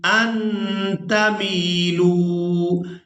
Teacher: میم کو یائے مدہ کی وجہ سے، لام کو واو مدہ کی وجہ سے کھینچ کر ادا کریں گے